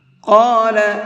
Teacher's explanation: یہاں پر بھی قاف کو منہ بھر کے پڑھیں گے